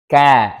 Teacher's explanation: tatkala mengucapkan huruf kaf, ya, lidah bagian belakang tidak terangkat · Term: istifal